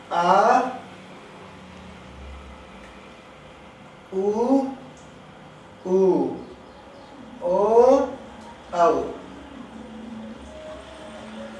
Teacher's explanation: ये जो 5 स्वर हैं, इनके उच्चारण में जीभ का पिछला हिस्सा क्रियाशील होता है, इसलिए पश्च स्वर है।